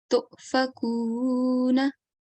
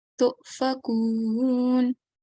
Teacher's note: And because the previous letter has a Dhamma, we have to treat this waw mad, we have to prolong this waw mad for 2 seconds